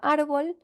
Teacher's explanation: Contrario a árbol, que de nuevo tiene su mayor fuerza de voz, es decir, su sílaba tónica en la penúltima sílaba